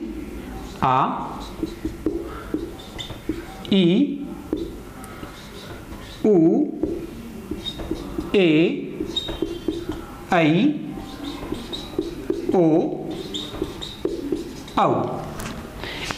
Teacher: वे स्वर जिनके उच्चारण में ह्रस्व स्वरों से दुगुना समय लगता है। ह्रस्व से दुगुना समय लेने वाले स्वर दीर्घ स्वर कहलाते हैं।